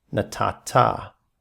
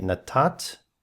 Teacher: Notice the dagesh there in the nun. For verbal roots ending in nun, when the nun receives a suffix beginning with tav, the nun assimilates into the tav. So instead of writing nun tav, we get a tav with the dagesh forte.